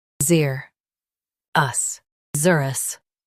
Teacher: Stress zer and keep us light.